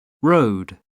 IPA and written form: rəʊd (road)